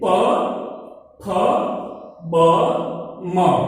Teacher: ओष्ठ यानी कि हमारा जो होठ होता है वो होठ से एक होठ दूसरे होठ से टच होकर बोलता है · मैं बोलता हूं तो मेरे जो होठ है वो टच होकर बोलते हैं प फ ब म। स्टूडेंट पता चला।